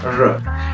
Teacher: non è una vibrante, quindi non c'è suono di vibrazione come in italiano o in spagnolo, non è una r. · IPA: ɹ